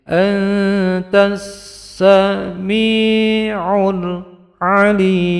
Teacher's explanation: Ini mendengung ifa 2 harokat, tas langsung pada sin yang bertasdid